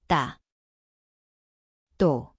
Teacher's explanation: It is a tense, same place, tighter, no air.